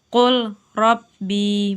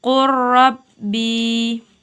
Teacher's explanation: la sukun langsung diidghamkan ke ro, bukan dibaca qul rabbi, bukan, tetapi dibaca qurrabbi. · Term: idgham mutaqaribain